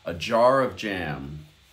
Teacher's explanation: you hear the of gets swallowed a bit